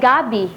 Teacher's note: Ang diin ay nasa unang pantig, kung saan ang ibig sabihin nito ay yung gabi na inuulam.